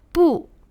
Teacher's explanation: Le B se prononce quelque part entre le B et le P.